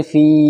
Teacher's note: فا یا زیر فی، یا ساکن سے پہلے فا کے نیچے زیر ہے تو یا مدہ ہوگا، یا مدہ کھچ کر پڑھا جاتا ہے